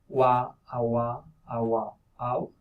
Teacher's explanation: W is just the labial velar glide